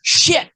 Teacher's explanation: you do that hard pronunciation of the T, okay? Where you add that extra syllable on it.